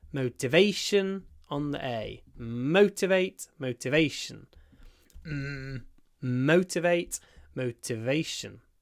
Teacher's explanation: Motivation on the A. Motivate on the mo.